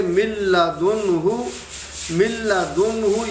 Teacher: لام ان 2 حروف میں سے ہے کہ جن کی وجہ سے ادغام بلا غنہ ہوگا، یہاں پہ ہم غنہ نہیں کر سکتے